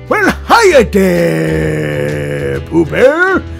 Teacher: when I get low, there's that vocal fry on there